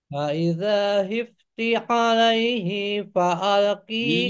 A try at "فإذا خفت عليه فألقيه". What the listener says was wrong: I-nya nggak panjang. Alaihi fa langsung.